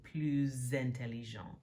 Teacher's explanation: if you need to like make the liaison with then an adjective that begins with a vowel, it's going to have the z sound